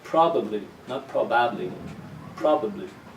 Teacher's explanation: this first syllable is the strong one so the ba of the second syllable becomes weak